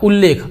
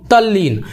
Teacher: त के बाद यदि ल आता हो तो त जो है ल में बदल जाता है।